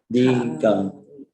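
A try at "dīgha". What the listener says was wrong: Long I, Diga.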